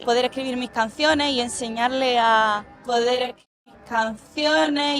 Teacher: vemos que dice todas las consonantes finales excepto la S · pronuncia la R final, la L, las Ds intervocálicas, y esto es muy normal que se pierda en Andalucía.